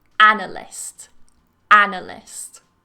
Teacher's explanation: So again, the stress is on the first syllable.